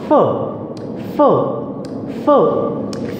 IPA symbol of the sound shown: f